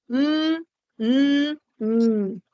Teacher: con la expulsión del aire por la cavidad bucal Pero va a resonar en la cavidad nasal